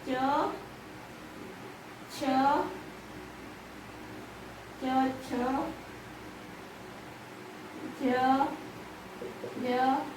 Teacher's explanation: જીભ છે તેના મધ્યથી અને તે તાળવાને અડીને બોલે છે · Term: તાલવ્ય વ્યંજન